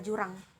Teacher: selanjutnya ada bunyi dari huruf j dengan tanda Pana ke atas bunyi ini termasuk dalam bunyi laminopalatal bunyi paduan dan bersuara